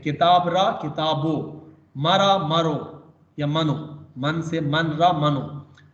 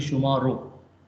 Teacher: ra is pronounced o after consonant and ro after vowels.